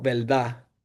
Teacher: la variación de la R al final de palabras. Sería la laterización que la R llega a ser como más como L. Eh, un ejemplo que yo he escuchado mucho es al decir verdad, se escucha más como verdad.